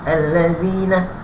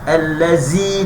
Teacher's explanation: Alladzina biasa ulang kejul jumpa balik huruf zal. Zal ni nipis hujung lidah. Alladzina jangan allazi itu huruf zai.